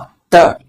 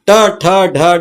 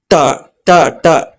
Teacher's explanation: ಟ ಗೆ ಏನಾಗುತ್ತೆ ಗೊತ್ತಾ ಟ ಟ ಗೆ ಸ್ವಲ್ಪ ಫೋಲ್ಡ್ ಆಗುತ್ತೆ ನಾಲ್ಗೆ ಟ ಗೆ ಒಳಗೆ ನಾಲಿಗೆ ಫೋಲ್ಡ್ ಆಗುತ್ತೆ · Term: ಮಡಿಚಿದ ನಾಲಿಗೆ